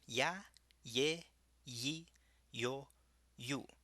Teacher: it always makes a y sound, like in yes. Never a zh or j sound. Just think the word in English fjord.